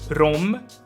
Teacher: something super weird that happens d turns into r